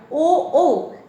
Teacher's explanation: এটির উচ্চারণ কণ্ঠ এবং ওষ্ঠ দুটোকেই নির্দেশ করে, তাই এটির উচ্চারণ স্থান কণ্ঠ এবং ওষ্ঠ